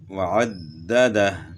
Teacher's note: آگے پھر دال مشدد ہے، اس میں تھوڑی سختی ہوگی، وعددہ، تو ہاں جو ہے نا ساکن ہو جائے گی وقف میں۔